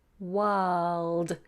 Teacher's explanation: my tongue is flat until I bring it up for the ell